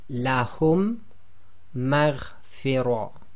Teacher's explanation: they're applying this Idghaam, so they're assimilating the 2 Meems together